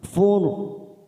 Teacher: Ro sukun karena kita wakaf di sini kita baca tafkim karena sebelumnya ada harokat dhammah